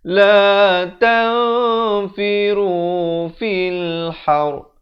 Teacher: La ta disamarkan. Nak kata nun pun tidak, fa pun tidak, dengan kadar 2 harakat. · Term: ikhfa hakiki